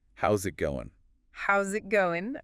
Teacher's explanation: And that final G often gets dropped or is really soft. It's one of those little things that makes speech sound um more natural, more fluid.